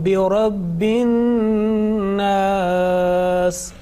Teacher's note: this is the nasal sound. You are making gunna here on an-nas.